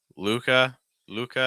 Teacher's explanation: when I'm doing that L, I'm using a dark L. So my tongue's down. It's just schwa.